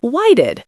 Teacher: The T here often becomes a quick D sound in fast speech